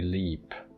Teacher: it's a long E, leap. It's this vowel. Close front, unrounded, tense vowel.